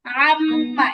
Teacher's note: 17 number মাখরাজ নাকের বাশি থেকে গুন্না